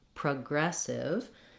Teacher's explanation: In progressive, the gress syllable is long and it has a clear vowel. The first syllable is unstressed and it has vowel schwa. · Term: second syllable stress